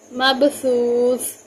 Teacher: یہاں با پہ قلقلہ ہوگا، سا اور سا کو بہت نرمی سے ادا کریں گے